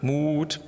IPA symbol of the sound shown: u